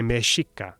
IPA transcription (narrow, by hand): mēxiʔca